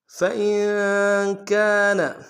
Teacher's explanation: نون ساکن میں غنہ کریں گے، غنہ نہیں کریں گے تو معنی صحیح نہیں ہوگا۔